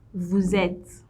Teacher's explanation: when you have vous and you have the last letter silent, but then you have a vowel coming beginning the next word, you link the last and the first letters together